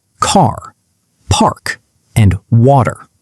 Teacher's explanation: Americans always pronounce the letter R when it comes after a vowel. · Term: rhotic